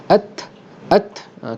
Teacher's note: ta yang selepas dimatikan ada hembusan angin at, kerana hukum hamas.